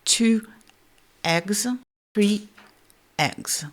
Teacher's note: c'est l'occlusive glottale, c'est-à-dire un son pour lequel la glotte va se fermer brusquement. Ça s'appelle le coup de glotte.